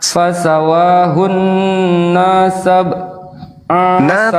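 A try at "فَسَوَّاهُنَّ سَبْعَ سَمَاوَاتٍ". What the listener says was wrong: Tidak panjang. Fasawwahunna sab'a samawat.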